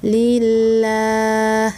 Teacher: lidahnya itu tidak usah naik dan lidahnya rileks atau lidahnya turun, biasa disebut dengan istifal